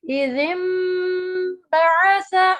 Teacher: ہم با پڑھیں گے لیکن نون کو میم کی ساؤنڈ میں چینج کر دیں گے غننے کے ساتھ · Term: اقلاب